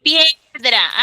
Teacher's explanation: la i es vocal cerrada y la e es vocal abierta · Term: diptongo creciente